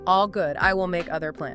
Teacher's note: It is not a question. It requires falling intonation.